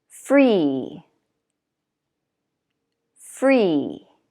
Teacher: Now, actually, this one you can notice doesn't have a consonant at the end. When the vowel is open like this, it's always going to be the long, tense one, E.